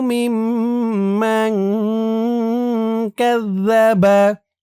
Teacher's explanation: মিম দিয়ে এই তাসদীদওয়ালা মিমকে ধরবে এখানে ওয়াজিব গুন্না হবে